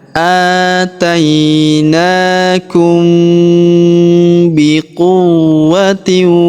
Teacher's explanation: huruf mim sukun bertemu huruf b ya. Maka kita dengungkan dan kita samarkan ya atau kita dengungkan dan kita tahan dengungnya dua sampai 3 harakat.